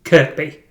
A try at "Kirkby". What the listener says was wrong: Kirby or Kirkby, you said there. No, it's Kirby. Yeah, Kirby. Yeah, the other K is a silent K. Unlike F.